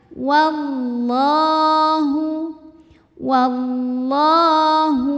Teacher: lam tebalkan karena sebelumnya fathah jadi ini bunyinya l pangkal lidah angkat